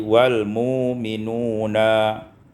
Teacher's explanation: Pada ayat 285 wal mu'minuna ibdalul hamzati wawan, ditukar hamzah waw menjadi wawan, ditukar hamzah dengan waw maka menjadi wal mu'minuna